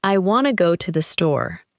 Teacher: In normal conversation, the speaker is more likely to stress want, go, and store. The two uses of to become much weaker. The sentence may sound closer to I want to go to the store. · The word to often sounds like to and want to may sound like wanna in informal speech.